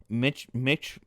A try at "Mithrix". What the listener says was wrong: It sounded like you were saying Mitch.